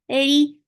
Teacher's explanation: ra is light, for kasra give e sound, the sound is short.